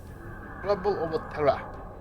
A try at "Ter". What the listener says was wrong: But it's not Terra, it's just Tur.